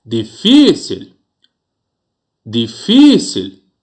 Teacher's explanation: A sílaba aí que eu emprego maior potência vocal é fi. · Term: sílaba tônica